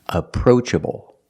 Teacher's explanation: The first syllable is a relaxed sound, like cup and up. And the second vowel is the long O, like no and go.